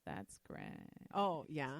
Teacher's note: it's almost like an affected baby voice but then you kind of let your vocal cords grind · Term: vocal fry